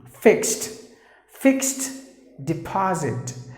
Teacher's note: Just imagine that the ed put together pronounced like T.